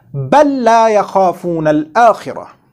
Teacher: we have to do idgham of this LAAM Saakinah of bal into the next lam